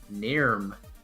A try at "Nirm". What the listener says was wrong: You might let it roll, the R's roll a little bit more, but that sounds about right.